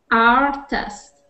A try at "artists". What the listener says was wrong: Artists. And when you see that with the S at the end, make sure you pronounce that S. So artists.